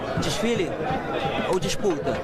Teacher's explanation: Esse S meio misturado com X, trocando o E pelo I, não é só aqui no Rio, não. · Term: chiado carioca